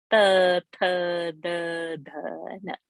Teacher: Tip of the tongue will touch the teeth. That is called dantya, dental.